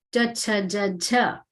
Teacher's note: they're letters which emerge when the tongue is touching the palate